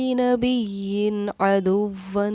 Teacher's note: یہاں دیکھیے تنوین کے بعد حروف حلقے میں سے عین آ رہا ہے، اس لیے ہم نے یہاں بالکل نہیں ٹھہراؤ کیا